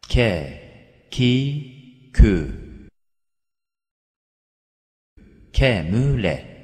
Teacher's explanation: Bu harfin çıkış yeri kafın çıkış yerinden biraz alttadır. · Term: Kef